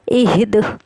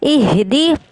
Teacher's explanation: دال پہ ہم نے قلقلہ کیا ہے